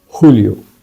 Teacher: So the J becomes H kind of sound in Spanish.